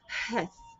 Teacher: So for the hey, it's like help from like deeper maybe, and the heth is coming up from higher in your throat.